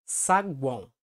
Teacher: Como também podem ser formadas por vogais nasais, que é quando o ar também passa pela cavidade nasal, dando esse aspecto anasalado no fonema, como na palavra saguão.